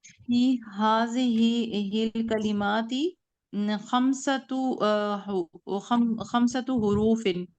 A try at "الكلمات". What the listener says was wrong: ٹھیک ہے، کلمات نہیں کلمت.